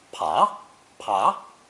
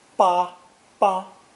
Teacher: It's pronounced either second tone pa, pa, or first tone ba, ba, depending on the meaning.